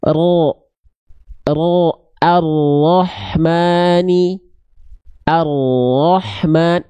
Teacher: jadi yang disentuhkan tuh bukan ujungnya banget makanya ada celah di situ sedikit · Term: huruf ro